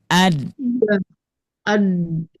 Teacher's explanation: Kalau untuk huruf dal ketika diucapkan menempelnya itu lebih banyaknya bukan ke giginya tapi ke dagingnya